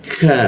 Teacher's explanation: Ka ada hembusan udaranya seperti itu ya. Karena rongga udara terbuka lebar maka ada hembusan udaranya.